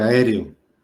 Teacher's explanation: La O corresponde, que esta es la última sílaba, sería aguda, grave, la sílaba re, y la E sola es esdrújula, y la A correspondería a las sobresdrújulas. Entonces la fuerza de la voz está cayendo en la E, y dijimos que todas esdrújulas y todas las sobresdrújulas siempre van acentuadas.